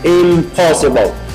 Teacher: You have to make the pronunciation easier, so it changes to m, because m and p, they are pronounced almost the same way, in the same place of articulation, which is bilabial.